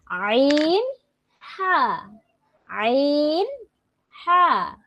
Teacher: হলকের মধ্যখান হতে আইন, হা